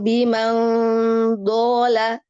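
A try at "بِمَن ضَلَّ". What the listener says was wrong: Jangan tipis, langsung nebal. Irtifaq solisan. Pangkal lidahnya naik langsung.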